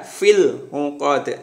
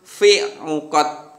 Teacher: Ini lam sukun harus dibaca jelas. Jadi tidak boleh dihilangkan. Harus fil, ada L-nya ya, fil 'uqad. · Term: bacaan al-qamariyah